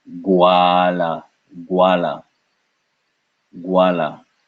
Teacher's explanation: This is a G sound followed by wa.